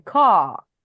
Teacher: los británicos generalmente como que alargan más las vocales